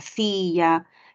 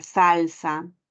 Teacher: Este fonema fricativo alveolar se utiliza con palabras que se escriben también con S